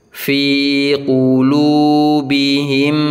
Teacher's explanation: Qulu sama bacanya panjang 2 harokat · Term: mad tabi'i